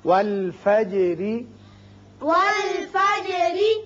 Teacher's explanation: جیم پر اس کی صفت قلقلہ ادا کریں، اور جب را کے نیچے زیر پڑیں گے تو را باریک ہوگا آگے ملانے کے لیے. · جب را کے نیچے زیر پڑیں گے تو را باریک ہوگا آگے ملانے کے لیے. اور وقف کی صورت میں جب ہم پڑھیں گے تو را ساکن چونکہ ہو جائے گا، اور ما قبل بھی ساکن ہے لیکن اس سے پہلے زبر ہے، اس لیے اس وقت پر ہوگا.